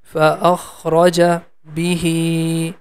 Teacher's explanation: The he sound is for two count because there is a small ya after that.